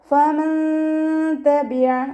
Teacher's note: നൂൻ സാക്കിനയ്ക്ക് ശേഷം ഇഖ്ഫാഇൻ്റെ അക്ഷരമായിട്ടുള്ള ത വന്നു. നൂൻ സാക്കിനെ മറച്ചു വെച്ച് മണിച്ചോതി കൊടുക്കുക.